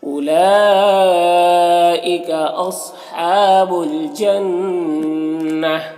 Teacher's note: وقف کی صورت میں ہائے ساکنہ سے بدل جائے گی